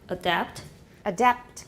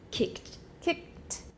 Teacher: gestures for consecutive stops overlap so that stops are unexploded when they occur before another stop